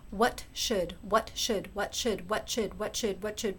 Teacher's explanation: You get that ta and the sha, and you pronounce them really, really fast together, like what happens in natural speech, and you end up with the ch sound.